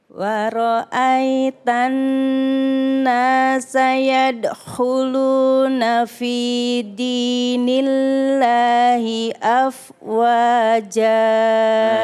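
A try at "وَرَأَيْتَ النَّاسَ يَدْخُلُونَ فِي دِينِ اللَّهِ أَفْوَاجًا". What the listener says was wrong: Ibu yadkhuluna itu jangan yadkhulu, jangan berhenti tapi nyambung Bu. Yadkhu. Beda kalau kita bilang yadkhu ya. Yadkhuluna ya. Wara'aitan nasa yadkhuluna fi dinillahi afwaja.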